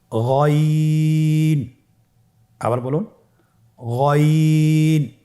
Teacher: গইন হরফটি উচ্চারিত হয় কণ্ঠনালীর শেষ ভাগ হতে। এখান থেকে উচ্চারণ করুন গইন।